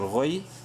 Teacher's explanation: زوجن، غین یا زبر غوی، غین کو منہ بھر کے پڑھتے ہوئے یا سے ملاتے وقت شارٹلی پڑھیں گے کیونکہ یا لین ہے. غوی، را زبر را، را کو منہ بھر کے پڑھیں گے زبر کی وجہ سے.